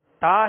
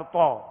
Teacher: تا کو باریک پڑھیں گے تو تا کا باریک پڑھنا یہ اس کی خوبی ہے، ٹھیک ہے، اور تو جو ہے اس کو پر پڑھنا، موٹا پڑھنا، یہ اس کی خوبی ہے، یہ اس کی صفت ہے اور صفت لازمہ ہے۔